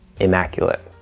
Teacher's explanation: It is not immaculate where you make the M longer. No, it's just immaculate.